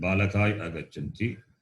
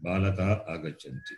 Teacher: Yakara is dropped and no further sandhi.